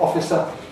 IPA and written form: ˈɒfɪsə (officer)